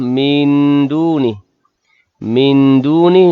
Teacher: nun mati bertemu dengan dal, ikhfa' hakiki dengung sekadar 2 harakat